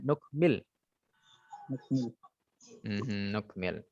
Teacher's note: Nukmil, nggak pakai panjang ya-nya, mimnya ya.